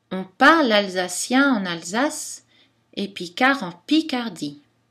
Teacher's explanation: l'accent secondaire simple tombe sur la première syllabe du premier mot lexical